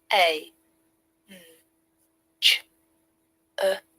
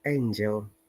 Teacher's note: this A is another diphthong, EI